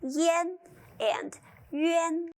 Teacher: in the nasal compounds ian and yuan, the letter A is pronounced more like E in Mary